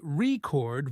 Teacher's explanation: with stress on the first part, it means a noun like a music record